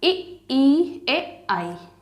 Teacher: अग्र हिस्सा यूज हो रहा है जिह्वा का, तो ये आपके अग्र स्वर हो गए।